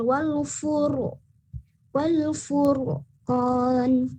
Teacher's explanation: Ya, jadi seolah-olah kalau untuk tafkhim ini ada muncul bunyi o di sana. Ya, ada bunyi o. Dan lebih berat juga, lebih tebal, wal furqan gitu. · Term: ro tafkhim